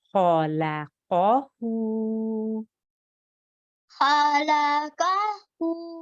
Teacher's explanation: the kha and the qaf are both thick sounds. So you need to make a thick sound, make your mouth into a serious shape to say those two letters